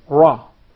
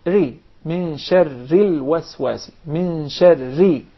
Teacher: Sometimes it will be pronounced very clearly, and sometimes the same letter will be pronounced with tafkhim, very heavy and deep, such as the ra with fatha, for instance, and sometimes the same letter will be pronounced with tarqiq, very soft and thin, such as if we pronounce the ra with kasra